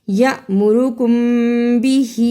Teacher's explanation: اخفاء شفوی ادا کی، ہا کے اوپر چھوٹی مد پڑی ہے، اس کو بھی ادا کیا